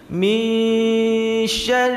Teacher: dominan suaranya itu dari hidung bukan dari mulut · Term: Ikhfa